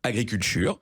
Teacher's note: il y a un ch qui s'est un peu glissé entre le t et le U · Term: affrication